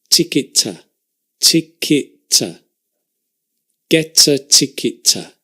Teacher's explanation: Ticket to, we also link, but because the T and the T are the same, we just have one.